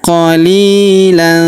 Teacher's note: Kemudian huruf li kita panjangkan 2 harokat karena terdapat ya sukun di depannya